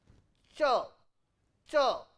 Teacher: it is a plosive plus friction, 2 kinds of sounds are there, that is why it is written in 2 symbols, cha, cha.